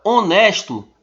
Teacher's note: ela começa com h e esse h é mudo não tem som sendo assim a palavra honesto tem sete letras mas apenas seis